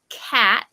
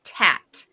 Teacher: instead of saying um the k sound correctly they do it in the front instead of the back